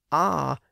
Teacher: ah is the lowest vowel sound meaning that you basically flatten your tongue to make it so when you flatten your tongue it makes it easier for